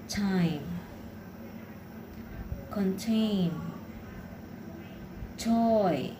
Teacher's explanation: pronounced with a strong puff of air at the beginning of words and stressed syllables. At the end of words, the T follows the final stop roll and is not aspirated.